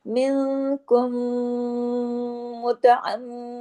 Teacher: تو کاف اور اگلے حرف کا میم آپس میں کم ایسے جڑیں گے، اور میم پہ چونکہ تشدید ہے تو میم کی آواز تو ناک میں جاتی ہے، تو جب تشدید ہے تو ڈبل میم ہے تو ڈبل غنہ ہوگا، اکمل غنہ کہلاتا ہے، بڑا غنہ ہوگا، دیر تک آواز ناک میں چھپے گی